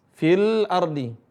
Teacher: Fi seharusnya panjang tapi karena ada Alif setelahnya tidak dibaca panjang langsung ke lam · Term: gugur Mad